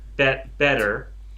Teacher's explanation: It's more like you're kind of tapping with your tongue than that you're blowing out hard the way you would with a T. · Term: soft D